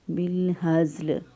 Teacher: اقصی حلق سے ادا کریں گے، یعنی سینے کی طرف جو گلے کا حصہ ہے وہاں سے ہا ادا کریں گے